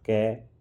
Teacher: क्योंकि महाप्राण दूसरा होता है। अर्थात क अल्पप्राण अघोष स्पर्शी और कंठव्य ध्वनि है।